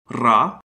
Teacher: a voiced alveolar trill